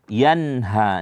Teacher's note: nun mati bertemu dengan ha itu izhar maka nunnya itu di diperjelas